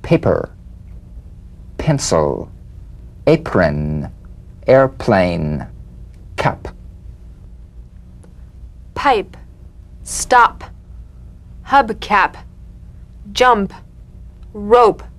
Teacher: Cognate B, the unvoiced labial stop consonant. The whispered tap of this drumbeat P is played with a light springing apart of the lips, just like for the B. On the springing away, feel a B in a whisper without any puff of air.